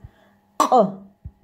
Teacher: Это гортанная буква. Прямо из горлышка выходит этот звук. К. Буква К с твердым знаком.